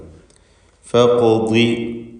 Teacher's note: ഖാഫിന് ഖൽഖല സുഗ്റ നൽകി ശബ്ദം ഹറക്കത്ത് പോലെ ചലിപ്പിക്കണം, അതിൻ്റെ സുക്കൂൻ ചലിപ്പിച്ച് ഉച്ചരിക്കണം. കൂടാതെ ഖാഫ് ഇസ്തിഅലാൻ്റെ ഹർഫുകളിൽപ്പെട്ടതായതുകൊണ്ട് തഫ്ഖീം വേണം.